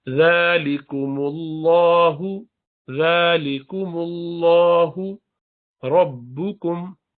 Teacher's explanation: लाम जलाला से पहले मीम पर पेश है, इसको भी भारी पढ़ेंगे, लाम जलाला है। · रा भी मुफ़ख्ख़म में भारी है, मोटा पढ़ेंगे।